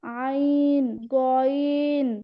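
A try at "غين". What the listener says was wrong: ওটা গইন না, গ। গলার মধ্যে গলার ভিতর থেকে আওয়াজটা আসতে হবে একদম।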